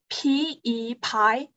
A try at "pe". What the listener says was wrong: Wait, not Pi. B E Pair. No, not Pi. Pair. Pair.